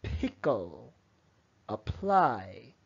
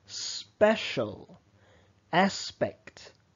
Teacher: it just means that when you say this P if you were to put your hand in front of your mouth you would feel a very big puff of air